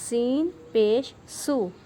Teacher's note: سین کو ہم سیٹی کی آواز سے پڑھیں گے